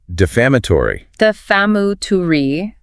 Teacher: Stress on the second syllable. First one is a schwa.